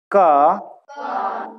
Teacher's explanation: क कंठ से आ रही है। हाँ, इसीलिए इन्हें कंठव्य भी बोला जाता है।